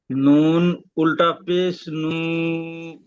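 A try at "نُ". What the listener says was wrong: নু হবে না জি। জ, জ উল্টা পেশ জু।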